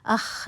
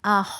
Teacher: خا میں استعالہ کی کوالٹی ہے، خا موٹا حرف ہے، تو اب آپ نے اس کو موٹا پڑھنا ہے، ٹھیک ہے۔